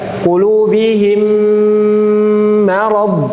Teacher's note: Mim pertama masuk ke mim kedua. Kemudian cara gunahnya, gunah lewat hidung full. · Kemudian cara gunnahnya, gunnah lewat hidung full. Lewat hidung full. Jadi tidak dibagi dua suara